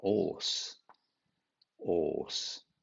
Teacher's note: And leave out the H as well as the R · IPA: / ɔːs /